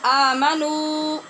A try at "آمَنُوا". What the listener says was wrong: آمنو آمنو ناک میں آواز بھی نہیں لے جانی، اور آمنو بھی نہیں پڑھنا کہ واو ختم ہو جائے.